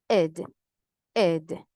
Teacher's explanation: La E va a sonar un poquito más parecida a una I.